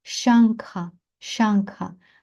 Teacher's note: наголосна а тому що тут у нас довгий звук